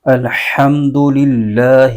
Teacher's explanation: अल्लाह के लाम पर खड़ा जबर है इसको एक अलिफ लंबा खींच के पढ़ेंगे · اللہ کے نام پر کھڑا زبر ہے، اس کو ایک الف لمبا کھینچ کے پڑھیں گے